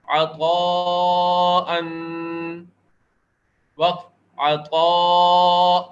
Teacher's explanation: 2 زبر وقف کی صورت میں 1 الف کے برابر کھینچ کر ادا ہوتے ہیں، تو یہاں پر وقف کرنے کی صورت میں 1 الف کے برابر مد کیا جائے گا۔